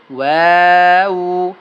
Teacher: দুই ঠোঁট গোল করিয়া ওয়াও পড়তে হয়